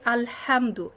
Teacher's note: হামদ মানে যেটা হা, যেটা মিডল হাল্ক থেকে আসে, কণ্ঠনালীর মধ্যভাগ থেকে